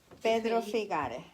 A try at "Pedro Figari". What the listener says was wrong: Figari, termina en I. Figari.